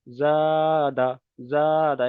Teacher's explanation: তাহলে জা আলিফ জাবার জা, দাল জাবার দা, জাদা, জাদা। এখানে জা বলে এক আলিফ পরিমাণ টানছি, কিন্তু দাল জাবার দা এখানে টানছি না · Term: আলিফ মাদ্দা